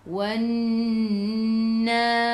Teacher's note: Lam tak ada sukun selepasnya ada sabdu terus tekan ke dalam nun. Nun ada sabdu. Kena dengung 2 harakat. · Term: wajibul gunnah